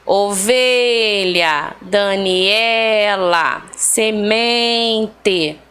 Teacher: A penúltima sílaba aí foi a mais forte de todas essas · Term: palavras paroxítonas